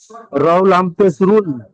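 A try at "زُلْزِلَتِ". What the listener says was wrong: না এটা র নয়, জা।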